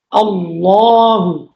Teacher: এটা সঠিক উচ্চারণ হচ্ছে হামজা লাম জবর আল লাম খারা জবর লামের উপরে একটা খারা জবর আছে এক আলিফ লম্বা করে পড়তে হল